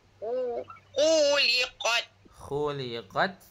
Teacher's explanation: Pendekkan sikit kat khu tu.